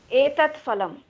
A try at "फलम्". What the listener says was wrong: It is phalam. We don't have sound fa in Sanskrit. Fa sound even in Hindi also it is not there. It is in that our Persian and Arabic words only. Few words are absorbed in Hindi, so that is why fa comes. But fa, za, these sounds are not there in our languages.